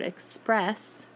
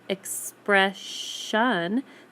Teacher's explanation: When you say the word express, you hear the S sound at the end. But when you say the word expression, the ION makes the ending sound a sh instead of a s sound. That sound disappears, that S sound disappears.